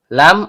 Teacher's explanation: ujung lidah bertemu dengan langit-langit bagian depan.